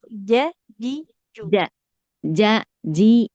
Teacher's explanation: Jimnya jangan mengalir nafas. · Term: huruf jim